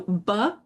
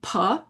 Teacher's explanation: So B and P are a voiced and a voiceless bilabial stop made with both of your lips